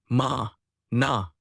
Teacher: Four, nasals. The soft palate lowers, blocking the oral cavity and forcing the air to escape through the nasal cavity.